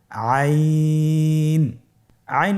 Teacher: হরফটি কন্ঠনালীর মধ্যখান থেকে উচ্চারিত হয় · আইন হরফটি উচ্চারণের সময় অবশ্যই তিন আলিফ টেনে পড়তে হবে